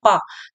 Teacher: प में होठ एक दूसरे को स्पर्श कर रहे हैं अंदर से श्वास निकल रही है और बोलते समय प होठों को स्पर्श कर रहे हैं प